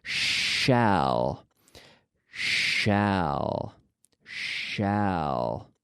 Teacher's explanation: my teeth are not touching but they're almost touching and I'm moving a lot of air I'm blowing a lot of air out through my teeth Shh it's like I'm in the library be quiet Shh okay